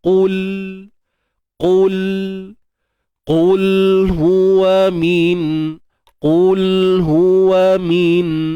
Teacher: Qul, huruf qaf sepastinya tebal selama-lamanya dan matikan lam ini tanpa unsur tawallud. Jangan beranakkan bunyi dia.